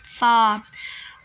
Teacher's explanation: जब आप फ़ा निकालते हैं तो आपके जो दांत हैं वो होंठों पर टच होते हैं